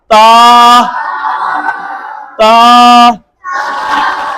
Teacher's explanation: जुबान की नोक ऊपर वाले दांतों की जड़ से हम लगाएंगे